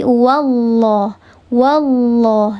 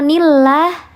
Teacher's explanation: Diangkat pangkal lidah atau lidah bagian belakang itu diangkat, dikeraskan sehingga menghasilkan bunyi yang tafhim atau bunyi yang tebal.